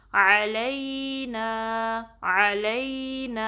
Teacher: نا کو 2 count stretch کرنا ہے